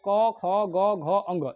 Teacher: ये क वर्ग जो है, जब क वर्ग बोलिएगा ना तो कंठ से बोलिएगा